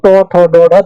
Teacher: এখন এই জায়গায় কনফিউশনটা দূর করার জন্য এইভাবে মনে করেন যে জিহ্বাটা যখন ঠিক উঁচু হয়, জিহ্বাটা যখন ঠিক খাড়া ভাবে এইটা তালু ধরেন আর এইভাবে জিহ্বার আগাটা খাড়া ভাবে স্পর্শ করছে, তখন কিন্তু সেটা মূর্ধন্য ধ্বনি হচ্ছে। যেমন ট, ঠ, ড, ঢ, দেখেন জিহ্বার আগা বাড়ি খাচ্ছে।